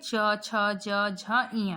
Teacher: जब इन वर्णों का हम उच्चारण करते हैं तो हमारा जीवा क्या होता है? तालु को स्पर्श करता है, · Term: च वर्ग